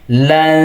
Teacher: nun matinya disamarkan ke huruf ta sambil ditahan dua harakat